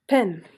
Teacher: P is voiceless you don't have to vibrate the vocal cords while you are pronouncing it